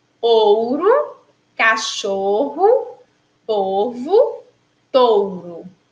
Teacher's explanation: O primeiro O, a gente falou com o som de O, né? Mas o segundo O, o O final aí, que está finalizando a palavra, a gente pronuncia com o som de U.